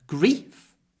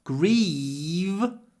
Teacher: because of the different sounds at the end of the word grief short vowel grieve long vowel